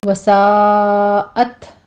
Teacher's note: وساءت مصیرا، سا میں مد متصل واجب ہے، 5 کاؤنٹ کریں گے. آگے تا پر ہمس ہوگا، تا ساکن ہے